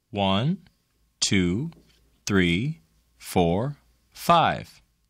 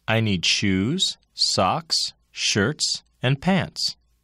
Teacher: the intonation pattern used in counting and listing is a series of level and rising tones that end with a final drop in pitch